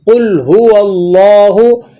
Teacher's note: آپ نے قوف کو موٹا کرنا ہے، اور آگے جو لام ساکن ہے اس کو آپ نے ہلانا نہیں ہے